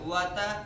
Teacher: واو کو ہونٹوں کی گلائی سے, تا زبان کے نوک اور اوپر کے دانتوں کی جڑ سے